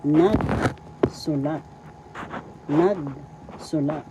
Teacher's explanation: the first syllable has the accent